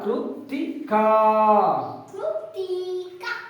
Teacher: ಕೃ ಕೃ ತಿ ಕುಡಿಸಿ ಹೇಳಿ ಕೃತಿಕ ಕೃತಿಕ ತಿ ಅಲ್ಲ ಕೃತಿಕ ಕೃತಿಕ ತೀ ಅಂತ ದೀರ್ಘವಾಗಿ ಹೇಳಬಾರದು ದೀರ್ಘ ಸ್ವರ ಸೇರಿಲ್ಲ